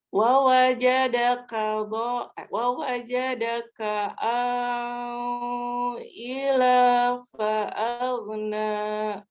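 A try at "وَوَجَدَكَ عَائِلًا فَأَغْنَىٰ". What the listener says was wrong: Ya, kurang dengungnya kurang lama ya tadi ya, nggak apa-apa, dilatih.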